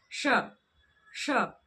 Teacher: आप पाएंगे कि आपकी जो जीभ की नोक है वह मूर्धा को स्पर्श करती हुई सी प्रतीत होती है। श पलटाइए अपनी जीभ की नोक को और मूर्धा की तरफ लेकर जाइए। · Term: मूर्धन्य श